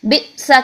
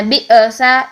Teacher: حمزہ اکثر حلق سے ادا ہوتا ہے، اکثر حلق میں ہم آواز کو جا کر فوراً سختی اور قوت سے بند کر کے جب اس کو واپس لائیں گے تو آواز نہیں ہلے گی، ٹھیک ہے۔ اور اگر آواز آپ کی ہل رہی تو اس کا مطلب آپ جان بوجھ کر اس میں قلقلہ لے کر آ رہے ہیں۔ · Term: شدت